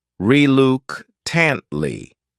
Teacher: this word has four syllables and the stress is on the second syllable reuke tantly the third syllable also has that schah sound reuke